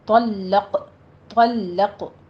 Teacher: قاف کے اوپر آپ نے قلقلہ کرنا ہے، قاف کو پر بھی پڑھنا ہے